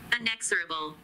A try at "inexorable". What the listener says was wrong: Is it unanswerable? Inexorable. It sounded like unanswerable.